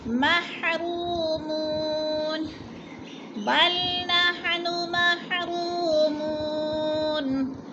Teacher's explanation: مو کو بھی کھینچنا ہے، وہ مدہ